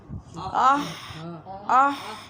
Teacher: حلق کا درمیانہ حصہ جو ہے وہ یوز ہوتا ہے ہا میں